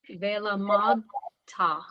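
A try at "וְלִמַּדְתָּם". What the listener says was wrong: Yeah. Velamanta. Good.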